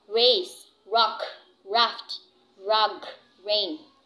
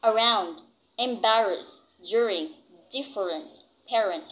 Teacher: the alveolar semivowel, which is the letter R